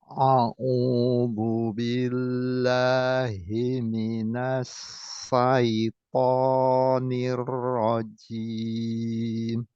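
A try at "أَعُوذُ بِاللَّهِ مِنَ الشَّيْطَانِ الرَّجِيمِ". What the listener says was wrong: Ya bisa di pesin, bukan minas saita tapi minas shin, minas.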